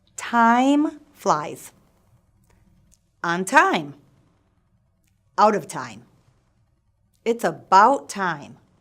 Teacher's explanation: notice how my jaw glides from one vowel, ‘ah’, to the next, ‘ee’. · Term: the vowel sound ‘eye’, diphthong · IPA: /aɪ/, aɪ